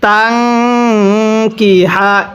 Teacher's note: যদি নুন সাকিনের পরে ইকফার হরফ এরকম কাফ থাকে, তাহলে নুন সাকিনটিকে গুনাহ করে পড়তে হবে।